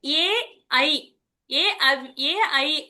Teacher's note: ఏ ఐ అనేవి కంఠాలు తాళవ్యాలు రెండు యొక్క స్థానాలు కలిపి పలుకుతాం వాటిని